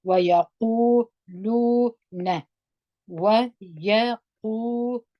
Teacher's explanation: واو ما په زور وایو، و یا په زور وایو، یا قاف باندې پیښ دی، واو مده دی، دوه حرکت یې راکشوو